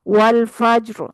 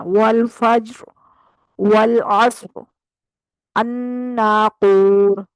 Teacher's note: اب اس سے پچھلا فا ہے، فا پہ کیا ہے زبر، تو جب اس کے اوپر زبر ہے تو اس را کو ہم موٹا ہی پڑھیں گے ، والفجر، رو ایسے کریں گے، ر نہیں کریں گے، والفجر،